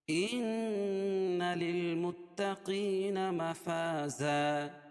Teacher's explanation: نون مشدد غنہ ہوگا، ایک الف کے برابر غنہ کریں گے اس میں